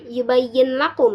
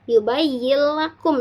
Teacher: tidak dibaca yubayyin lakum ya tetapi yubayyakum seolah nunnya tidak ada dan dimasukkan tetapi tidak disertai dengan dengungan